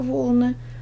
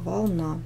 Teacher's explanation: в первом слове ударение падает на первый слог волны во втором на второй слог волна